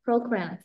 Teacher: Yeah, program. We stress on the first syllable.